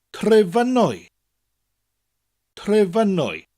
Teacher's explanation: F-U-N, the F makes a V sound, Fyn, and the W-Y creates an Oi sound